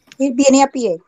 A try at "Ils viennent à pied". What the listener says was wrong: Oui, il vient à pied. Pas de T. La T, de nuevo, no se pronuncia.